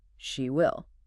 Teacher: With a rising inflection. This expresses shock or concern about a future prediction.